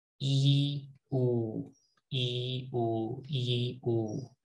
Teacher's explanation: Just do E, oo. E, oo, and feel your tongue, how it moves back.